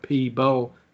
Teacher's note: sometimes you're getting a b sound in the second syllable so it's coming out like p bell instead of people so just try people people yeah so just pee polish just